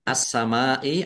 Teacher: minasamaai assamaai alif lam syamsiyah karena tidak dibaca langsung masuk ke huruf berikutnya yaitu sin ditandai sinnya ada tasdidnya sinnya dibaca dobel mim fathah alif mad thobi'i tetapi karena bertemu dengan huruf hamzah dalam satu kata maka menjadi mad wajib muttasil dibaca panjang harus lima harakat